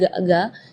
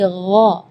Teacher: Jadi kalau ga itu dia makhrajnya dari lidah. Ya, tapi kalau huruf ghain itu dari bagian tenggorokan ya.